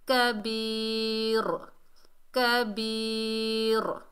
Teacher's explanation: وقف کی حالت میں را کے 2 زیر ختم ہو جائیں گے، را ساکن ہو جائے گی، وقف ہوگا وقف الاسکان۔